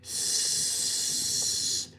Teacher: the unvoiced version is s, like a hissing snake